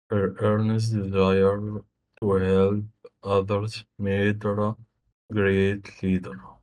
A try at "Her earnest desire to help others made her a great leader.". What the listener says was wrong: That was good.